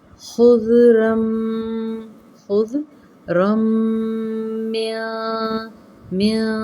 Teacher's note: تنوین کے بعد میم مشدد کے اندر ملائیں گے ہم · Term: یرملون کا قاعدہ